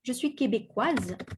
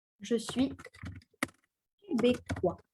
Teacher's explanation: And pronounce the Z sound at the end.